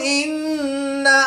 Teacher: نون مشدد میں ہمیشہ غنہ ہوتا ہے، تو یہاں پر ہم غنہ آنی کر کے پڑھیں گے۔